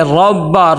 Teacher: را کو موٹا کر کے پر کر کے پڑھیں گے، اور را کو با کے ساتھ ملائیں گے